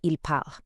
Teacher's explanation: the e n t ending for the ils and elles plural form is completely, totally silent. When you see ils parlent written out, it sounds exactly like ils parlent.